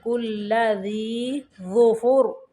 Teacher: ذی کو باریک پڑھیں گے اور ظفر، ظا کو موٹا پڑھیں گے